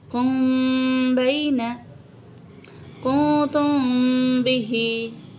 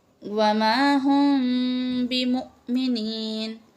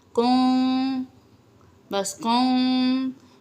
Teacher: इदगाम में हमने मीम को पे गुन्ना करना है, ठीक है, फ़हुम ऐसे, और यहाँ पे कुम, बस कुम, यानी पूरा होंठों को जोड़कर मीम को अदा नहीं करना, बल्कि उसकी आवाज़ को छुपाना है। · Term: इख्फा